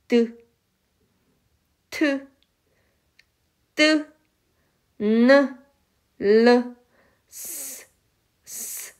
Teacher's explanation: 혀의 끝을 윗잇몸에 대어서 나는 소리입니다. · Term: 잇몸 소리